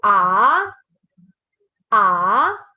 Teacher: your second tone is your rising tone. So you go from low to high.